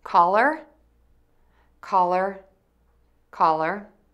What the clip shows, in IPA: kɑlər